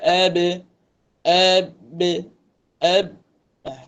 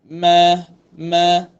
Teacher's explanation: Bibir atas dan bibir bawah dipertemukan. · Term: huruf ba